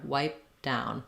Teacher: I close my lips for the P but I don't release the air wipe down I just go right to